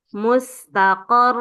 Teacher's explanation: Cara bacanya ro sukunnya di akhir itu lebih dipanjangkan